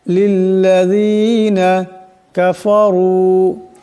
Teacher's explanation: রার উপর পেশ আছে, আওয়াজটাকে মোটা করিয়া পড়তে হবে